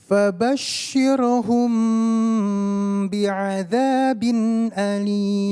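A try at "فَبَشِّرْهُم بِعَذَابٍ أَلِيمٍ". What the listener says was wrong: Iya, Masya Allah.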